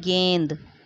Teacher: इसमें उच्चारण करने में नाक और मुंह से वायु निकल रही है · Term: अनुनासिक